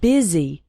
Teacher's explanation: The word busy is pronounced with an I sound